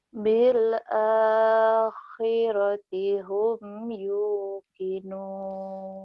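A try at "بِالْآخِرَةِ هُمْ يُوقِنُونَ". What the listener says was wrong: Udah bagus, cuman kho-nya kurang kotor. Bil akhi kayak ngorok, bener.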